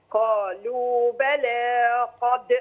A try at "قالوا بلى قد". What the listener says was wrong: لا المد زاد، قالوا بلى قد،